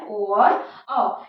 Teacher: तो ये है ए और अ। कंठोष् में कंठ और ओष्ठ दोनों से निकलते हैं। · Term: कंठ्योष्ठ